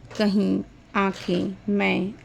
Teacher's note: इनके उच्चारण में ध्वनि मुख के साथ-साथ नासिका द्वार से भी निकलती है। कहने का तात्पर्य है कि जब हम बोलते हैं तो जो आवाज हो वो हमारे मुंह के साथ-साथ नाक से भी निकलती है। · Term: अनुनासिक स्वर